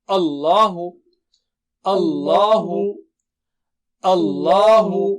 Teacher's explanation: آ باریک لام موٹا، اللہ